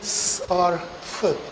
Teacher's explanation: When we say s or f, then there is no engagement of the vocal cords. They don't vibrate, the glottis.